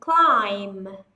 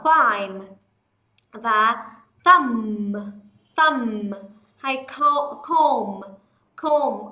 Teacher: chúng ta bỏ âm B đi, không đọc b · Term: âm B cũng bị câm